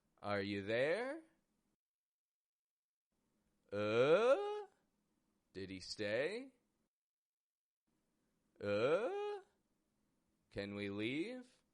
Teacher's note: the final word raises up in pitch two octaves this is called upspeak · raises up in pitch two octaves this is called upspeak and it has this raising and fading tone